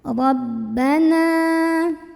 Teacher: bacanya tebal pangkal lidah kita dinaikkan diangkat · cara membunyikannya Nun kita panjangkan dua harokat saja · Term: tafkhim